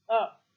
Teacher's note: The lips are spread or it is neutral. It is the front unrounded vowel between half close and half open.